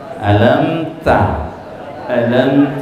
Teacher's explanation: dibaca jelas jelas jadi tidak didengungkan tapi langsung masuk ke huruf sesudahnya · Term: izhar syafawi